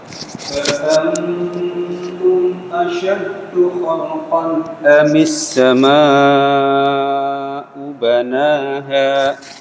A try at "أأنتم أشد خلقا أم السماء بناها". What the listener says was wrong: Punya kurang jelas Ustaz. Terus tanya sedikit ada hamesnya kalau bisa. A'antum asyaddu khalqan amis sama'u. Nah, itu ada tekanannya.